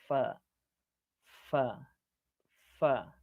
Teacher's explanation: Lalu kemudian ada satu makhraj yang di situ adalah bertemunya gigi seri bagian atas dengan bibir bawah, yaitu huruf fa, fa, fa, ya.